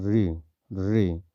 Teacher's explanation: मूर्धन्य स्वर दोस्तों, मूर्धन्य स्वर री, री जब हम बोलते हैं ये हमारे नाक और मुंह से दोनों साउंड निकलती, मूर्धन्य स्वर इसको कहते हैं।